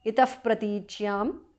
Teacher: Itaha visarga changes to upadhamaniya